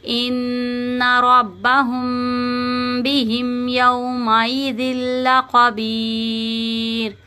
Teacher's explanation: میم ساکن کے بعد با آ رہا ہے نا، تو ہم یہاں پہ بھی گنہ کریں گے